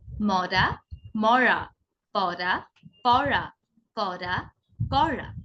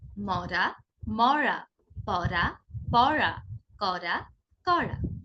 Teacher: র এর ক্ষেত্রে জিহ্বার অগ্রভাগ সামনের দাঁতের আহ উপরের পাটির গোড়ায় স্পর্শ করে উচ্চারিত হবে। আর র এর ক্ষেত্রে জিহ্বাটা ভাঁজ হয়ে একদম মুখ গহ্বরের অভ্যন্তরে গিয়ে উচ্চারিত হবে।